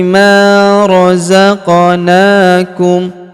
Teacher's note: Huruf ma kita panjangkan dua harakat karena terdapat alif di depannya. Mazaqo huruf qof berharakat sukun kita pantulkan atau kita qalqalahkan.